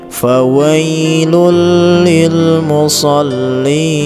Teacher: dimasukkan bunyi huruf lam dan dihilangkan bunyi tanwinnya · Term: idgham bila gunnah